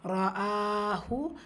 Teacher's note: ஹம்சா ஃபத்ஹா கூடவே அலிஃப் மத்தா 2 ஹரக்கத்தளவு நீட்டம் கொடுத்து ஓதணும்